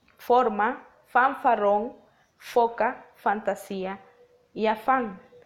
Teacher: fonema efe en estos labios dentales podemos determinar lo que es la presencia de contracción entre el labio inferior con los dientes superiores para el momento de articular la consonante · articulaciones consonánticas cuyo órgano activo es el labio inferior y el pasivo es el borde de los incisivos superiores o de los dientes superiores. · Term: labio dentales, labiodentales